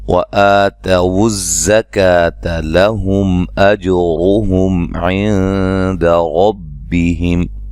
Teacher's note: زا کو سیٹی سے ادا کرنا ہے۔ لہم، میم ساکن کا اظہار ہے، غنہ نہیں کریں گے۔